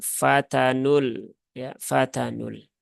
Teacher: kemudian di sini ketemu lagi dengan e lam takrif ya tetapi dia lam qamariah sehingga lamnya terbaca dengan jelas